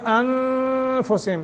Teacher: نون ساکن کے بعد فا، حروف اخفا میں سے ہے، تو یہاں بھی ہم اخفا کریں گے۔